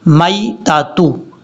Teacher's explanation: یا کو short cut پڑھیں گے کیونکہ یہ یا لین ہے یا مدہ نہیں ہے، اس کو لمبا نہیں کرنا، میتاتو۔ اگر یہاں پہ وقف کرنا چاہتے ہیں تو پھر یہ جو لاسٹ پہ آپ کو تا نظر آ رہی ہے، اس تا کو ہا بنا دیں گے، میتہ، اس طریقے سے۔